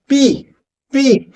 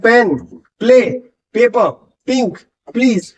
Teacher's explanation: तो पी sound के लिए दोनों हाथ बंद, दोनों होठ बंद करने होते हैं, प्रेशर बनाना पड़ता है, होठ खोल के हवा बाहर निकालनी पड़ती है, फिर जाके वो कहीं ना कहीं पी साउंड करता है।